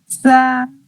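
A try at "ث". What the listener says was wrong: नहीं, और मुंह थोड़ी देर खुला रखिए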